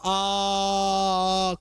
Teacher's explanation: तो आ में पूरा मुह खुलेगा